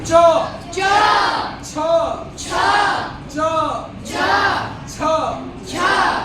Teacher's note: सबका उच्चारण कहां से होता है? तो तालु से होता है। ये तालु।